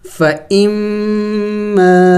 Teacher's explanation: فَإِمَّا الف مدہ ہے، اس کو ایک الف کا مقدار کھینچیں گے